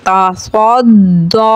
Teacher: स्वाद हुरूफ़ मुस्तअलिया है, पुर पढ़ेंगे